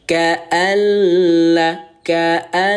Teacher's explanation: bunyi L ini, Bun, tidak boleh terbaca dengung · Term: bila gunah